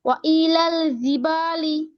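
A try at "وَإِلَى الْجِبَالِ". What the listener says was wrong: জিম শক্ত আপু। শক্ত হবে আপু, শক্ত জিম, জিম। আপনি ধরেন আপনি বাংলা জয় উচ্চারণ করতেছেন। জ, আমরা তো বর্গীয় জ বলি না তাই না? বর্গীয় জ বলি, সেখান থেকে জিম, জ, জিম একদম কাছাকাছি।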